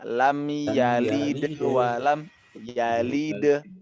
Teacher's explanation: Setiap qalqalah yang ada di pertengahan huruf seperti ini itu kecil. Jadi bunyinya lam yalid walam yalid.